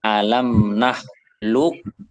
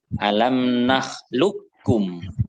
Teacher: membaca qaf sukun bertemu dengan kaf. Nah, maka qafnya akan masuk ke kaf. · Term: idgham mutaqaribain